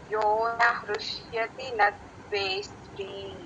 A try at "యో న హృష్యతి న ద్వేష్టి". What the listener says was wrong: యోన ఈ దీర్ఘం పెట్టద్దండి